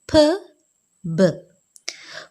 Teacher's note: For the articulation of p, b is a complete closure is effected by bringing of two lips firmly together and the soft palate is raised to shut off the nasal passage of air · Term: bilabial plosives